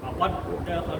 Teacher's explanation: Jadi dal pertama masuk kepada dal yang kedua, hilangkan dia punya qalqalah. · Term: Idgham mutamas lain